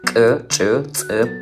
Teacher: Georgian language has a certain amount of specific sounds, such as ejective sounds like ch